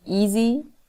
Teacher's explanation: a word like easy where the z is a voiced sound